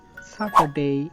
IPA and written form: ˈsætədeɪ (Saturday)